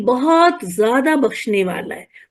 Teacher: जब मैं बोलती हूं तो बहुत को थोड़ा स्ट्रेस करती हूं थोड़ा खींचती हूं जिससे आपको अंदाजा हो कि ये बहुत कोई मामूली बहुत नहीं है बल्कि बहुत बड़ा सा बहुत है।